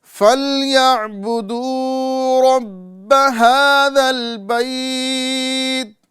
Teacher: حروف لین یا آ رہا ہے اور اس کے بعد میں جو ہے سکون عارضی یعنی مد لین عارض پایا جائے گا